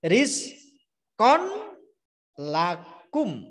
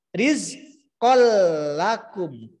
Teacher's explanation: Konnya langsung masuk di la. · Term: idgham bila gunah